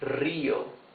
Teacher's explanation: Rio has the rough sound because the R is at the beginning of the word. Rio. However, if the R is in the middle of the word and is not doubled, it's a smoother sound.